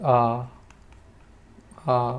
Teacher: ए ओ, ये इसके एग्जाम्पल रहेंगे। विवृत की बात करें तो यहाँ पर पूरा मुख खुलेगा